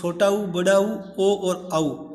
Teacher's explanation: जब हमारे स्वर बोलने में जब होठ एकदम गोल वर्त बन जाते हैं तब हम कहते हैं वर्ताकार · आपके जो होठों की आकृति है वो एकदम गोल वर्त के जैसी बनेगी